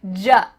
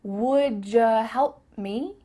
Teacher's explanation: Instead of a ch sound, like we talked about before, what cha doing? Here, instead, we are going to say ja.